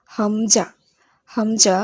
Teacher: হামজা, হামজা হলকের শুরু হতে শক্তভাবে বলতে হবে।